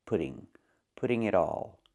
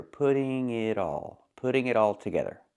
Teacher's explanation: The T in pudding sounds like a fast D because it's between vowels.